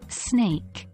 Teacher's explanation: s like the s in snake pronounced by forcing air through the teeth